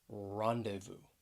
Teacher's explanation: it has three syllables the stress is on that first syllable